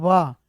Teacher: जब तुम व बोलोगे ना व तो ऊपर वाला दांत नीचे वाले होंठ से मिलाकर बोला जाता है। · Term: दंतोष्ठ ध्वनि